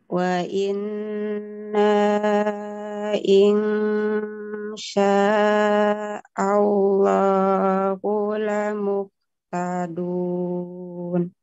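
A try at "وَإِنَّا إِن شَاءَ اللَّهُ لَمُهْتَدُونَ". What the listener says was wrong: Cuma saya ingin ini ya di ifa, coba biar enggak ing. Ini namanya ausat Ibu ya. Di sini kita bacanya dengung dan samarnya harus sama ya. Seimbang, jangan banyak dengung, jangan banyak samar, harus sama ya. Insya gitu, jangan insya. Kalau Ibu membaca demikian berarti sudah banyak dengungnya di situ. Atau insya, insya, ini juga insya, gitu coba.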